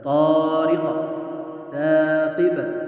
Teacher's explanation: قاف طارق، قاف اور ثاقب با یہ دونوں حروف قلقلہ میں سے، اس لیے قلقلہ کریں